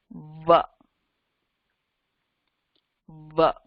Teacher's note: So you're using two parts of your mouth to say it, your teeth and your lips.